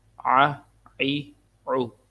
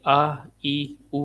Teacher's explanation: عین کو گلے سے موٹا پڑھتے ہیں تاکہ یہ الف کے ساتھ مکس نہ ہو. عین زبر آ، عین زیر عی، عین پیش عو، آ عی عو.